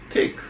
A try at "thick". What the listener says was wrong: Thick. Not a tick. you saying tick like a tick on a dog. I'm saying thick, like thick. It's not tick.